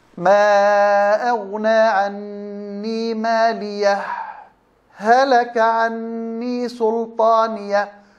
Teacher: هنا في سكتة لطيفة على الهاء مع الوصل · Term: الإظهار مع السكت